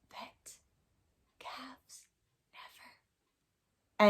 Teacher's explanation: if i whisper these words all of a sudden that v with the vibration goes away and i find i can make the f sound pet cavs